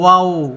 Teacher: ওয়াও বলতে ওই মুখটা গোল হয়ে যাবে